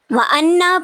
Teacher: وَأَنَّا پہ نون مشدد ہے تو یہاں پہ غنہ ہوگا